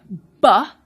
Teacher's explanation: you will notice that you've completely cut off the airflow and then you've released it